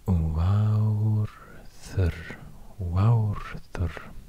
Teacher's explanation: So here I would expect another R, the other type of R at the end of the words, but it's this rolling R even at the end